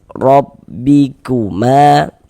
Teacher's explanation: Huruf ra ini memiliki harokat fathah ya, tanda baca fathah ini tanda baca di atas letaknya. Maka ini huruf ra dibaca takhim, dibaca tebal sehingga dengan menaikkan pangkal lidah kita ketika kita mengucapkannya